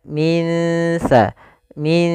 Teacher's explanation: cara membacanya samarkan nunnya kepada makhraj daripada huruf tsa makhraj tsa adalah ujung lidah menempel dengan Gigi Sari kita maka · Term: Ikhfa